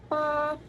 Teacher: konsonan letupan, bilabial, tak bersuara, dan non-aspirasi